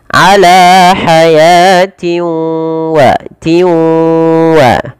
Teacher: tidak idgham kamil, masih menyisakan sedikit huruf nunnya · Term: idgham naqis